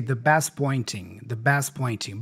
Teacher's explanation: So the T for best here disappears.